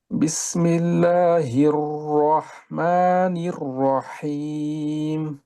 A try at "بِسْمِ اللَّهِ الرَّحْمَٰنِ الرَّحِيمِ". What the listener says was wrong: জিহ্বাটা জায়গা মতো না লাগাতে ওইখানে আপনার আর একটু নিচে লাগে, আপনার আর একটু উপরে লাগান। নিচে লাগালে যেটা হয় ধরেন সফের মতো কিছু একটা আওয়াজ হয়, যা এই টাইপের কিছু ওরকম অন্য একটা আওয়াজ হয় হইতেছে। বিসমিল্লাহির হির র, এই যে আর র, হির হির র, নির